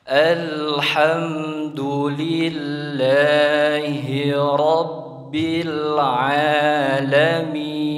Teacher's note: ketika mengucapkan huruf ro, di sini huruf ro-nya hukumnya adalah tafkhim, jadi harus dibaca tebal